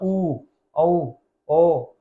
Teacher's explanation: जिनमें हमारे होठ क्या हो जाते हैं? हमारे होठ गोल हो जाते हैं, गोल हो जाते हैं, वे कहलाते हैं वृत्ताकार स्वर